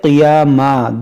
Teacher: اب یہاں پر دیکھیں ہم رکے تو اس کو پڑھے قیاما، دو زبر پر جب بھی آپ کو رکیں گے تو آپ اس دو زبر کو الف سے بدلیں گے